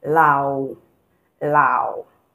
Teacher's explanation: So it is the A you're going to pronounce like you're going down and coming up. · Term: falling and rising tone